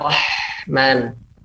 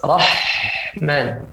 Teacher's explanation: Pada H dan huruf yang kita sebutkan Rahman, dia tidak mengenai langit bagian atas. Lihat, dia tidak kena nih langit.